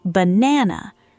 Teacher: but say it the way a native speaker actually [music] says it in casual conversation, and something happens. The first and last vowels flatten dramatically into a quick, weak uh sound. · The first and last vowels flatten dramatically into a quick, weak sound, banana, while only the stressed middle syllable keeps its full, clear vowel quality. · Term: schwa, schwa sound